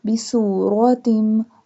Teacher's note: seen pronounced like a whistle sound